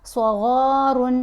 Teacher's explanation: صاد، غین، را، یہ الف، ساری آوازیں یہاں ہم نے پر پڑھنی ہے، موٹی پڑھنی ہے. صاد، غین دونوں جو حروف ہیں یہ تو ہیں ہی حروف مستعلیہ میں سے، یہ مستعلیہ حروف ہیں.